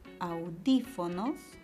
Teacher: y la palabra audífonos y si la ve en cuatro sílabas la mayor fuerza de voz está en ante penúltima sílaba porque es esdrújula entonces la cantidad de tiles asciende a 3